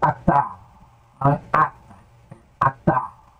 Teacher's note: Se uma palavra aparecer sem seta, que é esse símbolo que nós falamos aqui, pressupõe-se que deve ser acentuada na sílaba final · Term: sílaba tônica